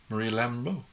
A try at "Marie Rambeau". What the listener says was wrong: It's an R though. There's no L. You're saying Lambo. It's not a car. It's Marie Rambeau.